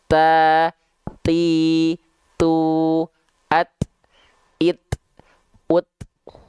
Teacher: Karena dia sifat dari segi suaranya tertahan, maka ketika dia punya sifat hams, nafas, dia hanya berupa percikan nafas aja.